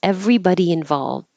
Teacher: everybody involved and don't say the final D